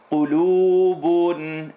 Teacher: The qaf is heavy, definitely, but the lam is light. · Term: light letter